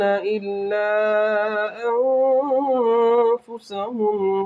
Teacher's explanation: اخفا ہوگا، نون کی آواز کو ناک میں چھپا کر پڑھا جائے گا